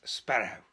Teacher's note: the way he rolls the R's, which would be the Northern Welsh type